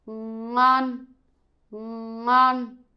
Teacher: You can hear my mouth open very largely at the beginning, right? Which means is NG, the second one.